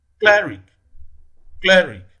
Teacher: The primary stress falls on the first syllable in cleric.